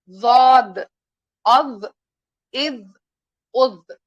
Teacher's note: ضاد جب آپ بولیں گے تو ہمارا کنارہ اوپر کے داڑوں کی اندر کی طرف ٹچ ہو جائے گا